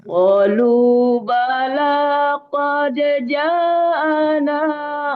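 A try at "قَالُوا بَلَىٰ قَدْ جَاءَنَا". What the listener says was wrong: Ja-nya panjang. Ja-nya panjang. Qalu bala qad ja'a. Agak panjang sedikit.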